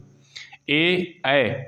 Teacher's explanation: कंठ तालू से बोले जाते हैं इन वर्णों का उच्चारण स्थान कंठ तालव्य है